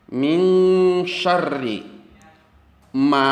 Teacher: holako terdapat nun mati bertemu dengan huruf SIM hukumnya adalah ikhfa bunyi ikhfa itu adalah dengung seolah-olah berbunyi Eng